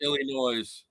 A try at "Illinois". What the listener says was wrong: Sir, the S is silent. It's Illinois.